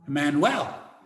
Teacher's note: Emmanuel in Spanish. The U gets almost turned into a W. And so you end up with one less syllable.